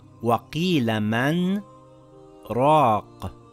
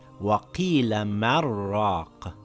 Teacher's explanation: I took a slight pause after the word man, and without taking another breath, then I continued reading.